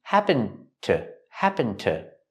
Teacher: We see the D in happened linked to the T. · The D in happened is a stop D when you link the words.